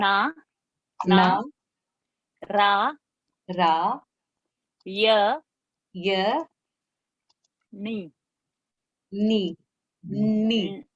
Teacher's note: Unless and until the tip of the tongue touches the roof of the palate, ni sound will not come.